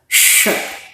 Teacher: kalau sin itu mungkin ada suara angin sedikit, tapi kalau sya itu lebih hembusan angin lebih besar